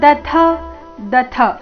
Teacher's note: ದ ಅಲ್ಪಪ್ರಾಣ ಮುಂದೆ immediately ಥ ಮಹಾಪ್ರಾಣ ಬಂದಿದೆ